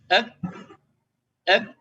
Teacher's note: kaf itu posisi makhrajnya ada di bawahnya qaf, sama-sama keluar dari pangkal lidah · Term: huruf kaf